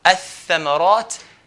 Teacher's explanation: Tha, ath-thamarat. So alif will go straight to the tha and put a shadda on the tha, hold the tha.